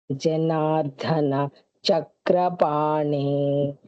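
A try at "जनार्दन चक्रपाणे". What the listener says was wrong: Da is only Alpa Prana, not Mahaprana. Janardana Chakrapane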